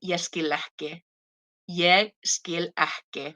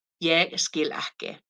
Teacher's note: you have two Ks, so that becomes aspirated as well, like with the double T